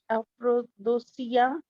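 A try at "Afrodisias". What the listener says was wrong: दूसिया नहीं है, अफ्रोदिसियास, देसियास,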